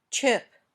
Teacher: in the same place as when you say shh but for your tongue pops open with a bit of a hissing sound your lips are a little bit rounded and the sound is voiceless